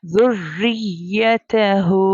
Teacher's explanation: सो यहाँ पर रॉ के नीचे कसरा यानी ज़ेर है, सो हमें यहाँ पर रॉ को बारीक पढ़ना है, थिन टोन में प्रोनाउंस करना है।